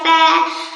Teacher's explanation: নিচের ঠোঁটের পেট সামনের উপর 2 দাঁতের আগার সঙ্গে লাগাইয়া